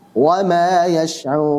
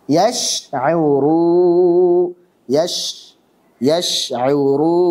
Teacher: Yang terakhir yang ini paling sering terjadi adalah mencampurkannya dengan suara dengung, suara gunna yang keluar dari al-khayshum